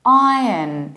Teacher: There is no R there. We open our mouth very much